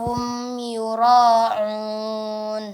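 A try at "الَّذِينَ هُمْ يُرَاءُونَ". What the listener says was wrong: Ya, yura. Di sini ada mad wajib, maka dipanjangkan lagi. Yura'un. Ya, hamzanya bukan huruf ain, ya. Yura'un.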